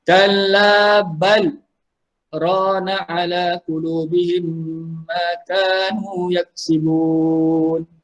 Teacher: Di sini adalah saktah. Okey, surah Al-Mutaffifin ayat ke-14 muka surat 588 dibaca dengan saktah ketika sambung.